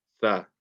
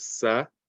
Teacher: The next letter here is tha, and this comes from the tip of the tongue touching the tip of the top 2 teeth. Notice that it's not the bottom teeth, it's not sa as a lot of people say, it's tha